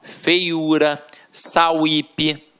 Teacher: Nas palavras acima, como feiura e sauípe, o que temos é semivogal mais vogal. Por isso, a regra do hiato não se deve mesmo aplicar.